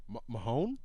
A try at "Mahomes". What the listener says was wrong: Yeah, Patty Mahomes. No, Mahomes with the M. Mahomes. Mahomes. Mahomes. Like Patrick Mahomes.